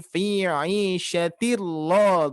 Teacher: Nah, ini termasuk idgham bila guna. Idgham, huruf idgham tapi tidak disertai gunnah atau tidak disertai dengungan.